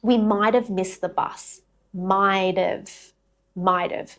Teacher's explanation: When have is unstressed, the h drops and the word reduces right down. You're almost linking it with a schwa sound.